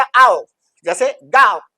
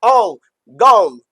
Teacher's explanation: इसको ब्रिटिशर बोलेगा आओ जैसे गाओ, और अमेरिकन बोलेगा ओ गो।